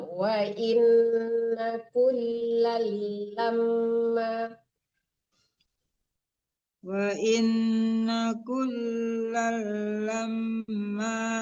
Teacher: lam yang pertama itu ditasdidkan ke lam